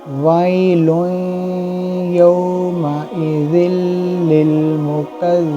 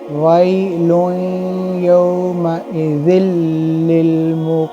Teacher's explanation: जब या के साथ होगा तो गुन्ना के साथ इदगाम होगा। जब यौमइज़िल लिल पढ़ेंगे तो यहाँ खींचेंगे भी नहीं लाम को और गुन्ना भी नहीं होगा।